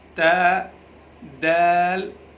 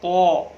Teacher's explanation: تا اور دال، یہ دونوں باریک پڑھنے ہیں، اور طا اس کو پر کرنا ہے، موٹا کر کے پڑھنا ہے۔ طا میں جو ہے منہ بھر کر کے اس کو ہم ادا کریں گے تاکہ یہ پر پڑھا جا سکے۔